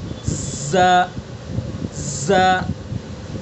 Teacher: کی نوک اور ثنا سفلا کا کنارہ اور کچھ اتصال ثنا، زبان کی نوک کو ثنا سفلا اور ثنا علیا سے ٹچ کریں گے ، کس طرح سے ز ز سین صاد، تینوں کا مخرج